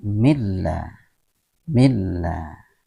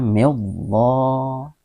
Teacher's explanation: Allah diucapkan tebal, namun ketika diawali dengan huruf hijaiyah yang berbaris kasrah, maka lafaz Allah ini dibaca menjadi tipis atau tarqi'